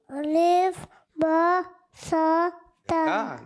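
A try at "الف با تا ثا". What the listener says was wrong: تا آپ کا تا نہیں آ رہا. تا کہاں گیا ہوا ہے میرے بچے؟ آپ نے تا بھی پڑھنا ہے. الف با تا سا.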